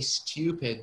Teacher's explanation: British usually say stupid. You can hear the y sound.